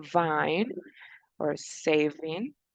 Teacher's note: So it's a v. So it is a voiced labiodental fricative.